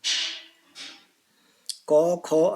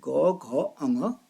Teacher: घोष में घोष माने आवाज गूंज होती है।